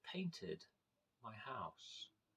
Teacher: the Ed is pronounced as an ID